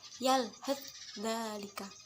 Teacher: Langsung dimasukkan ke huruf yang keduanya, yaitu huruf dal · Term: idgham mutajanisain